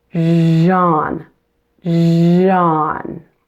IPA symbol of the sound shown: ʒ